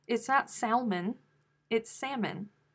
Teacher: after her grandkids okay wait you don't pronounce the ellen's no who pronounces the l in salmon who does that the l is silent